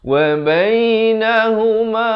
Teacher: ha ni ha simpul, makhrajnya ni di pangkal kerongkong